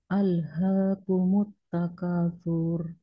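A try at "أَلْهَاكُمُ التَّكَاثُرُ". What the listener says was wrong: ulangi di sini jangan dibaca panjang takatur satu harakat saja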